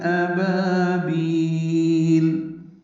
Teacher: بیل میں با کو لمبا کریں گے، مد عارض سکون بنائیں گے وقفاً